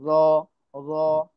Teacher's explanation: তারপর এটা এটা এটা একদম এটা মোটা করে পড়তে হবে। জিহ্বার আগাটা উপরের দাঁতের মাড়িতে লাগায় পড়বেন।